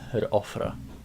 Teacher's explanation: if it's a W that is between two vowels, so it disappears and becomes a glottal stop